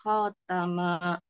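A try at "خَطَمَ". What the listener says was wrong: khama masih kepanjangan Bu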